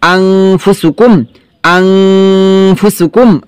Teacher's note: তো দেখেন, হামজা নুন জবর আন ফা পেশফু আনফু, কিন্তু এখানে আনফু হবে না, হবে কি আংফু, ইকফা গুন্না